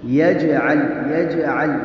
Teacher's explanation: جیم پہ قلقلہ کریں گے، اس لیے کہ یہ حروف قلقلہ میں سے ہے۔